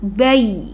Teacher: langsung saja ke huruf ya mati, bai gitu, tidak didengungkan, tidak dipanjangkan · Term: huruf lain